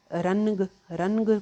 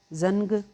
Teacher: रनग कोई नहीं कहता, नून हाइड हो रहा है